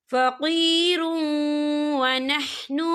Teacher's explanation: या देखिए फ़क़ीरुन, रा के पर तनवीन, तनवीन के बाद जो है वाव आ रहा है और वाव जो है रूफ यरमलून में से है, तो यहाँ पर इदगाम होगा, तो हम इसे थोड़ा सा गुन्ने के साथ पढ़ेंगे।